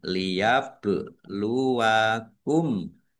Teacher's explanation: ba sukun bacaan qalqalah dibaca memantul ditampakkan pantulannya · Masuk ke huruf lam tetapi tidak mendengung, tapi lamnya dibaca double, ada tasdidnya. Bak sukun bacaan kolkolah, dibaca memantul, ditampakkan pantulannya.